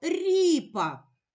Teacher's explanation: який ми чуємо перший звук р який він приголосний м'який позначимо двома рисочками Рі і голосний позначимо кружечком ріп п приголосний